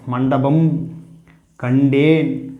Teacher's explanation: நாவின் நுனியானது அன்னத்தின் நடுப்பகுதியை தொடுவதால் டன்னகரம் பிறக்கிறது.